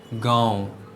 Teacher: अनुनासिक ऐसे स्वरों का उच्चारण नाक और मुंह से होता है और उच्चारण में लघुता होती है, जैसे कि गांव, इसमें अनुनासिक का प्रयोग हुआ है।